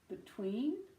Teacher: you can hear the stress on the second part of that word